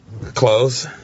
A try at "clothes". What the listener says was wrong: a D or something.